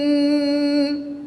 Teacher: نون ساکن کے بعد کاف حرف اخفا میں سے ہے تو یہاں پر اخفا ہوگا، یعنی غنہ زمانی کر کے پڑھیں گے